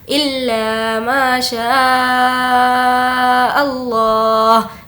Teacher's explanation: लफ्ज़ अल्लाह को मोटा पढ़ेंगे क्योंकि लफ्ज़ अल्लाह का क़ायदा ये है कि अगर लफ्ज़ अल्लाह से पहले ज़बर हो या पेश हो तो लफ्ज़ अल्लाह को हमें पुर पढ़ना है और अगर लफ्ज़ अल्लाह से पहले ज़ेर हो तो उस सूरत में बारीक पढ़ेंगे।